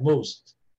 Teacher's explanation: Você vai falar o T só até a metade